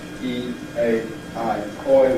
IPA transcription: iː, eɪ, aɪ, ɔɪ